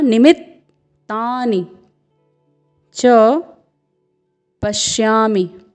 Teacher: निमित्तानि, यहाँ पे आप देख रहे हैं न में ह्रस्व स्वर है, फिर म में ह्रस्व स्वर, फिर अर्धवर्ण त है, फिर पूर्ण वर्ण त है। तो आपको यहाँ पर इसके उच्चारण के समय निमित्त अर्धवर्ण त में रुकना है थोड़ा सा।